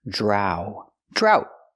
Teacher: We see the OU making the OW sound like out and about, drought. And the T is a stop T, drought.